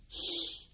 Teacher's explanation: You put your tongue to the roof of your mouth and you blow out sideways. It's the sound of a snake with a lisp, perhaps. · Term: Double L